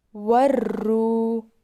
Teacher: واو کے اوپر جزم ہے، اسے واو ساکن بھی بولتے ہیں اور واو ساکن سے پہلے پیش واو مدہ ہوگا، اس کو ہم تھوڑا کھینچ کر پڑھیں گے